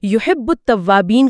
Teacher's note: پہلے آپ یحب کہہ کر با پر آواز روکتے ہیں، یعنی ویلکرو سے چپکتے ہیں، پھر بو کی حرکت کے ساتھ اسے چھوڑتے ہیں، پھر ات کہہ کر تا پر آواز روکتے ہیں اور تا کی حرکت کے ساتھ اسے آگے بڑھاتے ہیں۔ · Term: تشدید